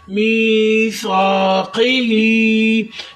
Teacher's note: काफ को कलकला करें, मोटा करें